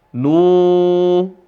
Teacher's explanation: Kata nun dibaca selama dua ketukan karena ada Wau